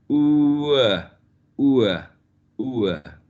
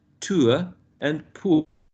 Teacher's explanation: It starts with u in a high position that goes to the central, right? Ua. And we get examples here like tua and poor. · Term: centering diphthongs